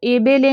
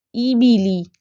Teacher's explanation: مثال کے طور پر اس کو اے بے لے نہیں پڑھنا، اے کی ساؤنڈ نہیں پیچھے آنی چاہیے، ای کی ساؤنڈ آنی چاہیے